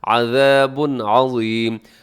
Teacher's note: یہاں پہ عین ہے حروف حلقی میں سے، تو اظہار کیجیے گا، غنہ نہیں کرنا